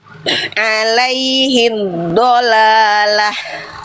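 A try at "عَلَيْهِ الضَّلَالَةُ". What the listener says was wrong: Nah, itu mah hak kecil. Alaihi dhalalah. Itu mah hak kecil, harusnya alaihi dhalalah.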